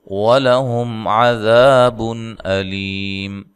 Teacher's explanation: بن نون تنوین کا اظہار ہے، لمبا غنہ نہیں کرنا